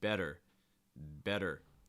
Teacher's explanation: it's like making a d sound but very quickly and in fact you don't even need to make contact you can just raise and lower your tongue very quickly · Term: t sounds